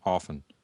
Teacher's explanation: in the United States we don't pronounce the T in often